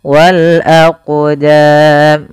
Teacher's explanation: cara membacanya yaitu kita memantulkan huruf qnya yaitu kita pantulkan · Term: huruf Qalqalah